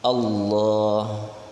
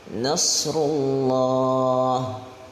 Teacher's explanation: huruf lam daripada lafaz Allah ini ditebalkan karena sebelumnya berharakat fathah. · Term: tafkhim